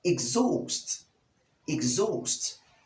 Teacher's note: Exhaust with the short e sound, the g sound, the z sound, the long o sound, the s sound, and lastly the t sound.